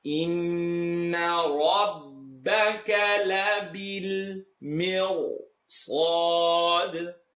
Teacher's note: Noon shadda, full nasal sound.